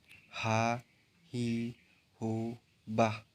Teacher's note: melafalkan huruf H dikeluarkan dari tengah tenggorokan